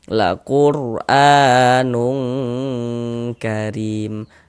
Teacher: yang condong berbunyi eng itu yakni ikhfa hakiki ab'ad hurufnya itu kaf dengan qf itu. Jadi kalau ada nun sukun atau tanwin bertemu dengan huruf kaf bertemu dengan huruf qof itu baru condong berbunyi eng